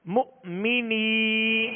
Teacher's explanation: نون یا زیر نی، مؤمنی، مؤمنی. یہاں یا مدہ کا قاعدہ ہے، ایک الف کی مقدار میں اسے کھینچیں گے